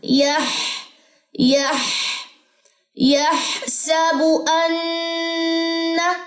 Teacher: باریک والی ہاں نہیں پڑھنی. یح گلے کے درمیان سے نکالیے